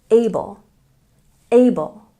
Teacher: we have a stress on the first syllable